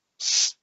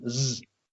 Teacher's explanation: S is in the mouth, so therefore it's unvoiced, whereas z is in the vocal cords in your throat